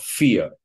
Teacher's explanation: It's pronounced like R. So the ending or the suffix ER is pronounced like a kind of dark R vowel